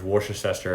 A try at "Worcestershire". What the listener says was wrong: Worcestershire? You said Worcestershire? But you added Chester in it. Work at Chester? Work at Chester.